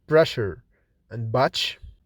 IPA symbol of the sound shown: ʃ, tʃ